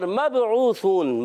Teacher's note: مب با میں قلقلہ ہوگا